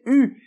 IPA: y